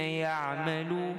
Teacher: salah satu sifatnya iaitu ain dia sedikit sederhana longgar